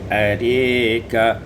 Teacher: dibaca imalah fathah ra dan alif menjadi arika.